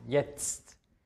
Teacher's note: Also man hört erst ein Z und dann noch ein T am Ende.